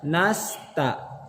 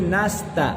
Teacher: Ini akan berpengaruh kepada ta kalau tidak hati-hati. Ta bisa menjadi tebal atau bahkan bisa menjadi berubah dari ta jadi to.